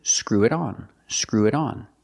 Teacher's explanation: you hear that t and it change to a fast D because it's between vowels